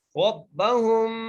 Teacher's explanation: ہا کو میم سے ملاتے ہوئے غنہ کرنا ہے کیونکہ میم ساکن ہے